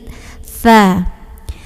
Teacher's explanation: Tha ini nanti suaranya alirin, terus anginnya juga ngalir. · Kalau huruf tha itu ketemu ujung lidah sama ujung gigi seri yang atas.